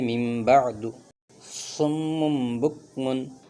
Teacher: نون ساکن اور تنوین کو میم سے بدل کر گنہ کے ساتھ پڑھیں گے، جیسے من بعد صم بکم۔ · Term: قلب